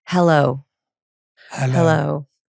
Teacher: That's the lowest end of your range. What happens here is when we take in breath and we speak on the outreath, it forces our vocal cords to relax and it puts us in our lower range.